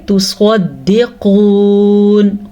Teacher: قاف بھی موٹا پڑھیں گے اور سواد بھی · سین اور سواد کا فرق ہی ختم ہو گیا, ہم نے سواد کو سین پڑھ دیا